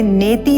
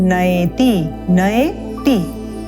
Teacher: इसे नेति ना बोले, ये अय का स्वर है, नयति नयति।